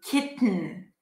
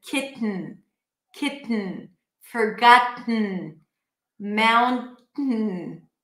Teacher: keep the tongue up, release air through the nose